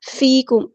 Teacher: فیکم یا مد آئی ہے تو مد اصلی ہوگی، ایک الف کے برابر لمبا کریں گے۔ میم ساکن پر ٹائم نہیں دینا، یہاں پہ اظہار شفوی ہو رہا ہے۔